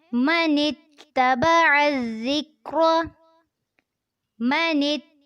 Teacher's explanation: मनित में ता के साथ नून को मिलाना है, तबअज़ में आइन को ज़ाल से मिलाना है और इसको नरमी से पढ़ना है।